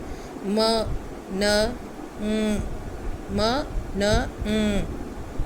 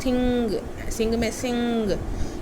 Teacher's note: नाम से पता लग रहा होगा आपको कि ये नाक से प्रोड्यूस होती हैं, ठीक है। The sounds in this group are made by lowering the वेलम and letting the air stream pass primarily through nasal cavity. आपका जो एयर फ्लो है वो नेज़ल कैविटी से निकलेगा। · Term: नेज़ल साउंड्स